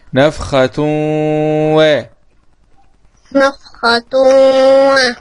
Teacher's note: إدغام بغنة لوقوع الواو بعد التنوين والواو من الحروف الإدغام بغنة المجموعة في كلمة ينمو.